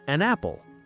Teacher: The N sound at the end of an links directly to the A sound in apple. It becomes one smooth unit of sound, an apple. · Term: consonant-to-vowel linking